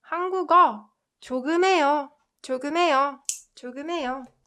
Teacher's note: So this one has a very similar rule with when 니은 받침 is combined with 히읗 or when 리을 받침 is combined with 히읗. This h sound gets muted.